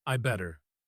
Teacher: The grammar here is actually I had better get going. But in spoken English, the had disappears completely.